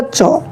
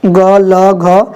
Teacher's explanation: च एक अघोष वर्ण है, जबकि इनमें सभी जो वर्ण है ग, ल, घ, ये सभी क्या है? घोष वर्ण के उदाहरण है।